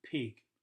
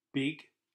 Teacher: The letter P is voiceless and the letter B is voiced. If you mix them up, then you'll have different words.